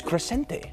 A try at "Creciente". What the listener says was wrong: You got one more syllable in there.